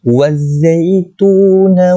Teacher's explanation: alif lam ni kita tak sebut sebab dia jadi alif lam syamsiah. Kita kena masukkan waw itu ke dalam za.